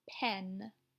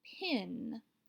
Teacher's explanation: notice the difference between pen and pin pin does not say e like egg